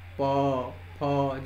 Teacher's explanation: उ, ऊ, फिर आप प, फ, जब आप बोलते हैं तो दोनों होंठ आपके ऊपर और नीचे सटते हैं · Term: ओष्ठ स्थान